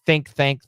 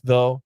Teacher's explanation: there's one th with air and one th with uh vibration